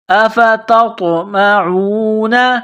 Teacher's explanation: أَفَتَطْمَعُونَ، یہ نقطوں والی تا ہے، اس کو باریک کرنا ہے، نقطوں والی تا کو طوا کے ساتھ ملانا ہے، پلس کرنا ہے۔ طوا ساکن ہے، یہاں پر قلقلہ کریں گے